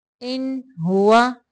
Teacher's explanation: یہاں پہ اظہار کرنا ہے، صرف نون کو ظاہر کرنا ہے